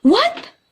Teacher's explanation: the intonation of the word what, from low intonation to high intonation